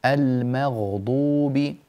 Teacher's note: في كلمة المغضوب رقق الميم،